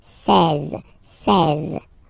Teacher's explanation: Now you get this seize, seize, same thing, final E doesn't exist, seize. E and E together, they give you the sound E, E, really open. Seize, seize, okay?